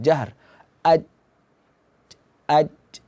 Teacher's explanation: Jim itu eh mengeluarkan angin yang berlebihan watunul J Ji tidak huruf Jim itu dia hurufnya tidak ada angin jadi kalau kita sukunkan bukti tidak ada angin kalau Jim itu